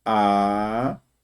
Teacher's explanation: A vogal I forma hiato com a vogal anterior.